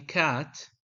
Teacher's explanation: k in cat involves the back of the tongue touching the velum